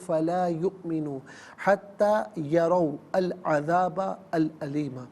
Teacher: یؤمنو میں حمزہ ساکن ہے، جھٹکے کے ساتھ پڑھیں گے